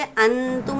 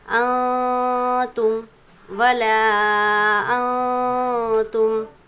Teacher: پھر دیکھیں گے یہاں پر نون ساکن ہے، اس کے بعد تا ہے، تا ہے حروف اخفا میں سے، تو نون کی آواز کو ہم ناک میں چھپا کر پڑھیں گے۔